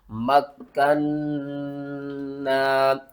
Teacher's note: یہاں پر دیکھیں 2 تشدید اکٹھی آ رہی ہے، کاف کو ہم نے 2 بار پڑھنا ہے، نون کو 2 بار پڑھنا ہے، اور نون کے اوپر ہم نے غنہ کرنا ہے، اور نون کو 1 الف کی مقدار اوپر کی طرف کھینچ کر پڑھنا ہے۔